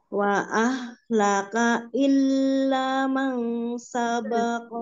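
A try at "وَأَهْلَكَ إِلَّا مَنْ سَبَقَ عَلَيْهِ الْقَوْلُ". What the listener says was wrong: jangan berhenti ketika ko illa atau b-nya tunaikan dulu illa masabaqo alaih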